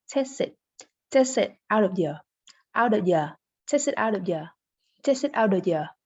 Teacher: We often say ya instead of you in informal spoken English.